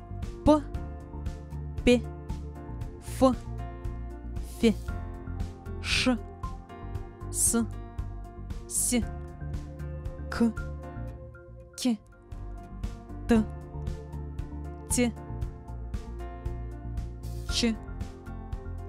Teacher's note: Согласные звуки, которые создаются только одним шумом и без голоса, называются глухими. При образовании таких звуков голосовые связки расслаблены и не дрожат.